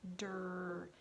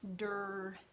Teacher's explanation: you're saying the sound for the D and the sound for the R, but you're saying them quickly, so you're smushing them together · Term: consonant blends